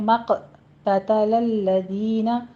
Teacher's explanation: مق قوف کو پر پڑھنا ہے، قلقلہ بھی کرنا ہے اوپر ، آگے تا بھی باریک ہی رکھنا ہے، الذین کی دال